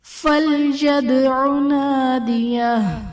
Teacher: فَلْيَدْعُ میں دال حرف قلقلہ ساکن ہے، یہاں پر قلقلہ خوب ظاہر کریں گے۔